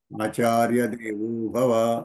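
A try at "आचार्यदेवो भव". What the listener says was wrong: మీరు ఆచార్య గ్యాప్ ఇవ్వద్దు. ఆచార్య దేవో ఒకటే సమానం. ఏమవుతుందంటే ఆచార్య అధిక సంబుద్ధి అనుకునే ఆచార్య దేవో భవ అనుకోవచ్చు కదా. అంచేత మీరు ఆచార్య దేవ అని సమాసపదంలో విరామం తీసుకోకూడదు. ఆచార్య దేవ భవ, ఆచార్య దేవో భవ అని అనొచ్చు.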